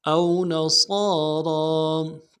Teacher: را کو موٹا ادا کریں گے، را کے اوپر کھڑا زبر ہے، ایک الف دال میں کھینچیں گے